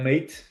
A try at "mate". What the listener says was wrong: nice, mate. We don't say the T's. You should never say the T's. It's a forbidden. Like we just don't like T's.